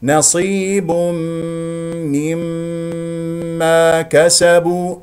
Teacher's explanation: والياء ايضا مرققه نصيب الباء شديده مجهور اي نضم الشفتين فيها وفيها تنوين جاء بعد التنوين ميم ادغام بغنه بمقدار حركتين وبعدها ميم مشدده ادغام بمقدار حركتين نصيب نصيب نصيب م ما · الصاد مفخمه مرتبه اخيره مرتبه خامسه مكسوره والياء ايضا مرققه نصيب الباء شديده مجهور اي نضم الشفتين فيها